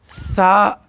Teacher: زبان کی نوک جب ثنائے علیہ کے اندرونی کناروں پر لگے تو ثا ادا ہوتی ہے